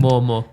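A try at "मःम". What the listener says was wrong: Yeah, not mo, it's a ma. Yeah, it's an a sound, not o sound. Yeah, mama. mama.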